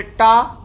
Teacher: जब टा बोलते हैं तो जीभ देखिए मुड़ करके ऊपर जाके टकराती है, वो मूर्धन्य है।